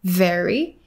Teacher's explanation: he exchanged the v sound for the b sound